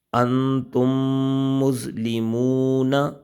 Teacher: تو پہلا ہم نے قاعدہ پڑھا تھا ادغام شفوی، کہ میم ساکن کے بعد دوسری میم آ جائے وہاں ادغام شفوی ہوگا، یعنی کہ غنہ کریں گے۔ میم ساکن وہ میم جس پر جزم آ جائے اسے ساکن کہتے ہیں، جس حرف پر بھی جزم آئے گی اسے ساکن کہتے ہیں۔